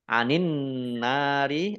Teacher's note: alif lam syamsiah karena tidak dibaca langsung masuk ke huruf berikutnya yaitu Nun ditandai ada tasdidnya Nun tasdid dibaca ghunah atau mendengung ditahan dua